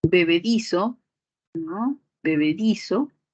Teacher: Bebedizo, separando silábicamente, di, so, y la mayor fuerza de voz sería en este di de bebedizo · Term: palabra grave